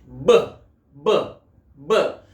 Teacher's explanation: When I am pronouncing here B, then I am feeling that my vocal cords are getting vibrated. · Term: voiced